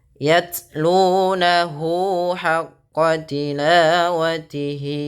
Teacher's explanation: baca taknya itu dengan sifat jaharnya dulu, tertahannya suara, baru ke hamasnya.